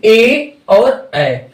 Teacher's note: कंठ और ताल दोनों से मिलक जो ध्वनियां आती है ये है ए और ऐ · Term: कंठ तालव्य